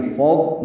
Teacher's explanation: فض میں ضاد ساکن ہے اور اس پہ اظہار ہوگا، قلقلہ نہ ہو